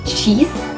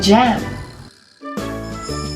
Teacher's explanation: So the third one is affricates, a combination of a stop and fricative. Air is stopped completely and then released with friction.